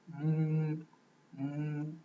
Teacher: when there is a sukun on this waw, and the previous letter has a dhamma, then the sound must be a little longer than the short vowel dhamma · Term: waw with sukun